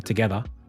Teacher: And in Australian English, we drop the R